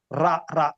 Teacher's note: Trilling ఆర్ అంటారు English phonetics లో.